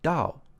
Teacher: Dao is a falling tone it's a fourth tone Dao starts high and Falls fast